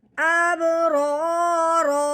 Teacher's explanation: رو کے اوپر زبر یا پیش ہو اس رو کو موٹا کر کے پڑھتے ہیں، پر کر کے پڑھتے ہیں، اگر رو کے نیچے زیر ہو تو اس رو کو باریک کر کے پڑھتے ہیں۔